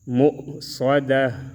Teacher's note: میم حمزہ پیش مؤ، صاد زبر صا، دال زبر دا، تا دو پیش تن، مؤصدتن، اس پر جب ہم وقف کریں گے تو مؤصدہ، مؤصدہ پڑھیں گے، تا کو ہاں میں تبدیل کریں گے